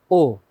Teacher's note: ও ধ্বনি উচ্চারণে জীব একটু উঁচু হয় আর জীভের পেছনের অংশ উঁচু হয় ও ধ্বনি উচ্চারণে ঠোঁট গোল হয় আর ঠোঁট অল্প খোলে ও উচ্চারণ করে দেখো ঠোঁট অল্প খুলছে ও ঠোঁটের পরিমাণটা একদম